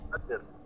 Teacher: Kalau qad, tu tak ro langsung. Kalau qadr, ha dia bunyi ro sikit.